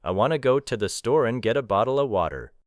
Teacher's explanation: The important words remain strong. Want, go, store, get, bottle water. The grammatical connectors become compressed. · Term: weak forms